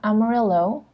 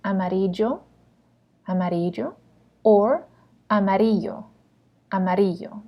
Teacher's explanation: It's not Amarillo, because remember, it's not going to be a L sound. It's going to either be a Y or a J sound. So it's amarillo, amarillo, or amarillo, amarillo.